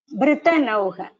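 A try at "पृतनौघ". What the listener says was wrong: Okay. Not Ba. Pritanaugha.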